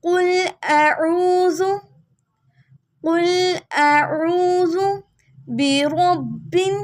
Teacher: قاف کو موٹا پڑھیں گے